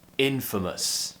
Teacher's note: the schwa sound is the most common sound in british english it's happening twice · don't forget the stress is on the first syllable here in infamous